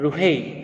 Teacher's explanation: रु यहाँ पर र में ह्रस्व उकार है, इसलिए लघु होगा